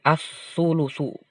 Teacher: As-sulusu, bukan al-sulusu. Alif lamnya nggak dibaca, tapi langsung dibaca ke sin, ke sa. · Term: idgham syamsiah